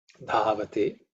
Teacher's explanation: Dha is the fourth letter in the Thavarga. So it has to be aspirated. Mahaprana. Dhavate.